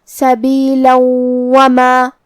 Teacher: تو ہم یہ تنوین کو واو میں ملا کے غنہ اور تشدید کے ساتھ یہ حکم کو ادا کریں گے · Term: ادغام